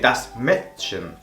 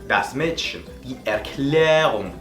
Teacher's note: Esta A con dos puntos hace que la letra, en vez de sonar como una A normal a nuestro modo de verlo, sonaría como una E muy abierta, una E, ¿vale?